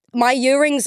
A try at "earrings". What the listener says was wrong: You say ear like year.